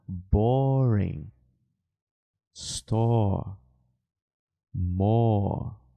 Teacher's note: É um som mais aberto. Ele é o som do O mesmo. E lembra dos dois pontinhos? Pois é, ele é longo. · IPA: /ɔː/